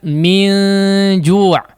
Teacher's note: Gunnah pada ikhfa di sini ditipiskan min ju'. Kemudian jangan ju ya.